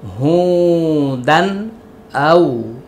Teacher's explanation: এই যে দুই জবরের বামে একটি আলিফ আছে, এটা আমাদের পড়তে হবে না। তানউইনের পরে হামজা আসছে, এটা ইজহার, স্পষ্ট হবে। হামজা ওয়াও জবর আউ, আউ।